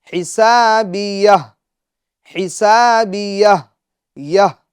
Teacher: یہ جو ہا ساکن ہے، یا کے بعد ہا ساکن کو ظاہر کرنا ہے